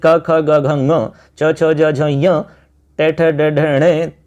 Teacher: स्पर्श वर्णों के अंदर जो पंचम वर्ण है 5वें नंबर का, वो सब अनुनासिक हैं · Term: अनुनासिक वर्ण